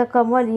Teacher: कमल या शब्दांमध्ये म वर जोर दिला जातो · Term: बलाघात